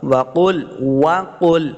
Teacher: فکذبنا وقل، وقلنا، واو کو صحیح تلفظ سے پڑھنا ہے، اپنے دونوں ہونٹ گول کریں گے تب واو کا صحیح مخرج جو ہے وہ ادا ہوگا۔ وقل، وقل، قاف کو موڑا پڑھیں گے، قاف حروف مستعلیہ سے ہے